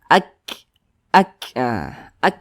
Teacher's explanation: huruf Kaf juga memiliki sifat Hames Nah kalau dia sukun Nah ada nafas yang kita alirkan